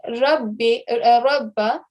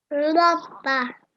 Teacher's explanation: rather than saying rabbi, rabba, you're going to give it a round mouth. You're going to say rabba.